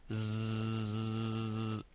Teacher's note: The little buzzing vibration sound is coming from your tongue, the very tip of your tongue. Zzz. And it's just like making a buzzing sound, but a very short one.